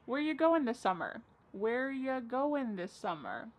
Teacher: Where ya, which is you, goin', dropping the G.